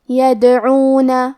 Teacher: حرف الدال پہ جزم ہے لہذا ہمیں دال کو قلقلہ سے پڑھنا ہے اور قلقلہ کا معنی ہے حرف ساکن کو ہلانا تو ہم دال کو ہلاتے ہوئے یہ کلمہ کو پڑھیں گے یدعون.